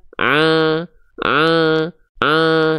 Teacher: Jadi masuk ke hidung suaranya, agak sengau.